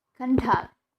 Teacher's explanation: It functions as noun, so stress on the first syllable.